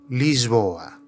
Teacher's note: pode acontecer o som Z antes da consoante sonora